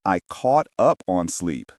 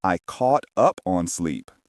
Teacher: The stress is on caught and sleep.